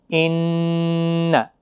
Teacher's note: دیکھیں ادغام شفوی میں بھی ہوتا ہے، اور یہاں پر نون مشدد اور میم مشدد جہاں پر بھی ہوگا تو وہاں پر آپ گنہ جب کریں گے تو زبان تالوں کے ساتھ لگتی ہے اور گنگنی آواز ناک کے ذریعے سے باہر آتی ہے